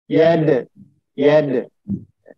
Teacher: Kemudian ada kata yad. Dalnya itu sukun, maka itu qalqalah sugro. Dalnya harus dipantulkan.